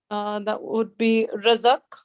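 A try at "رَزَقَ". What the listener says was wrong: Razaqa. The qaf should have, qaf has all 3-letter verbs. The last letter should have a fatah. Should be razaqa.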